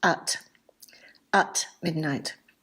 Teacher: Notice that at is often unstressed in spoken English and is often pronounced at midnight.